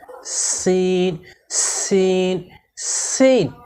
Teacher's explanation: সিন হরফকে জিহ্বার আগা সামনের নিচের দুই দাঁতের গোড়ার সঙ্গে লাগিয়ে শীর্ষসহ চিকন করে পড়তে হয়।